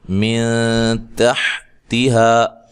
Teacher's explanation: نون ساکن کے بعد تا ہے. تا حروف مستعلیہ میں سے نہیں ہے، لہذا یہاں باریک اخفا ہوگا